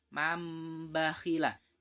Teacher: Nun sukunnya diganti menjadi mim. · Dalam pengucapannya seperti ada mimnya, tapi dalam tulisannya tidak ada. Ini yang dinamakan dengan iklab.